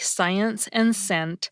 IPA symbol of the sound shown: s